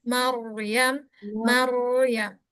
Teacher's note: waktu masuk ke ro, naikkan pangkal lidahnya